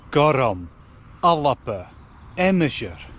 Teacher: I'm adding a vowel into where actually there's only consonants written. This is called epenthesis, or a helping vowel.